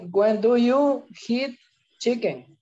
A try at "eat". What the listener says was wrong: No se dice hit, solo se dice como una I.